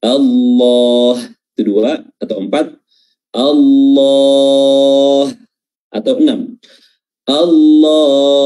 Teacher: mat arid lisukun itu kita bisa baca 2 harakat, bisa baca 4 harakat, dan juga bisa baca 6 harakat